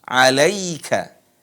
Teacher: Sering dibaca alaika, pakai e, alai. Yang benar adalah pakai i, alaika.